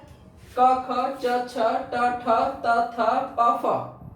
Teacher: कम वायु गले में आके टकराए, यानी झंझनाहट जो हो वो कम हो, उनको हम बोलते हैं अघोष